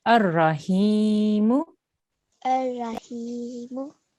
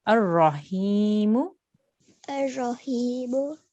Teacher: when you say your ra here, you need to make your mouth into a round shape, so it's a thick and heavy sound.